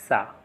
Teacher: जो सा है ये दंत वर्ण है